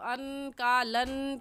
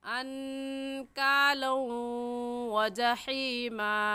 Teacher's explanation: واو دیکھنے میں ایک ہے اور پڑھنے میں 2 مرتبہ پڑھا جائے گا، ایک مرتبہ لام کے ساتھ ملا کر اور دوسری مرتبہ خود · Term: غنہ کے ساتھ ادغام